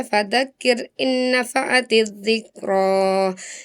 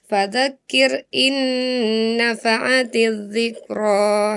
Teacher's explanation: Yang harusnya dibaca ditahan dulu 2 harokat idgham bi gunnah